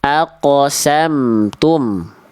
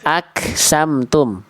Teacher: Nah, jadi bedanya qaf sama kaf itu, kalau qaf itu ketika sukun ada pantulannya, kalau kaf itu percikan nafas yang keluar